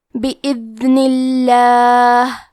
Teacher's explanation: کلمت بإذن میں دال ساکن کو ظاہر کرنا ہے، کیونکہ نون کے نیچے زیر ہے تو لفظ الجلالہ کے لام کا حکم ہے ترقیق، تو ہم حرف اللام کو پتلی آواز میں پڑھیں گے